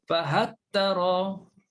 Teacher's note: Kalau baca Abu Am, fahattara, hilang terus lam. Dan sebenarnya dia imalah lah, fahattari.